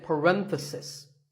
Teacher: If you talk about just one bracket, you say parenthesis. The stress is on ren.